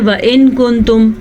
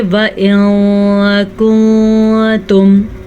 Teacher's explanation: جیسے کہ عموماً اس کو ہم پڑھتے ہیں وَإِن كُنتُم، ہم نے اس کو اخفا کے بغیر پڑھا، ہم اس کو پڑھیں گے وَإِن كُنتُم۔ اب میں نے یہاں پہ غنّہ بھی کر دیا اور میں نے چھپا بھی لیا۔ اخفا کا مطلب ہوتا ہے چھپانا۔